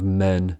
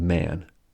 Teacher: men has a pure a sound but man has a modified a sound as it is pronounced man indeed when a comes before nasal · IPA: /ɛ/ vs /æ/